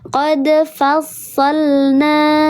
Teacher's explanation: Betul, meledak, dia diledakkan karena qalqal itu dalam bahasa Arab artinya meledak, diledakkan, tapi ledakan atau pantulannya natural saja karena di tengah kalimat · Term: qalqalah yang sughra